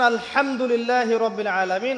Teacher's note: এই হা এর মাখরাজ কোথায়? হা এর মাখরাজ কোথায় বলেন একজন? কণ্ঠনালীর মাঝখান থেকে।